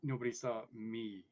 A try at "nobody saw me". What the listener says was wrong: You put the emphasis on the wrong syllable.